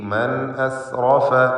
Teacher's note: സാക്കിനത്തായ നൂൻ ശേഷം ഹംസ ഇദ്ഹാർ ഹൽഖി നൽകി നൂനിനെ വെളിവാക്കണം. മൻ അസ്റഫ ഈ പദത്തിൽ റാഇനെ പൂർണ്ണമായ തഫ്ഖീം ചെയ്ത് ഉച്ചരിക്കുക.